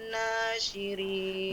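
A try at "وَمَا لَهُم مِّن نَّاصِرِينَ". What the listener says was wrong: Min, ritmenya agak lebih panjang ya. Min nasirin.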